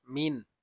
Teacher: এটা হবে ইজহার, গুন্না হবে না। মিন নুনকে পরিষ্কার করে পড়বো।